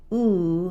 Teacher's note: So when we say ooh, there's space all across the mouth, but the tongue is high in the back.